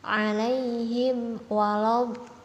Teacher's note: mat lazim musaqqal kalimi bertemunya tanda mat dengan huruf yang bertasydid. Nah, contohnya alaihim waladhdallin. Nah, dibaca panjang 6 harokat